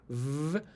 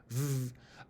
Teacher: a V is a sound which you're making by curling your lower lip back underneath your upper row of teeth